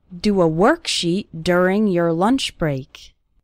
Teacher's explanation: the letter o in the word work and the letter u in the word during they both have this er sound